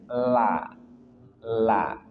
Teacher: lam dari dua sisi lidah hingga ke akhirnya ke ujungnya bertemu dengan gusi atas di hadapannya. La la.